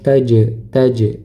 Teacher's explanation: Huruf jim ketika sukun maka dipantulkan meskipun pantulnya tidak begitu kuat ya karena di tengah bacaan